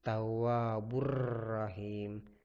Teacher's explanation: idgham bilagunnah jadi dia tidak berdengung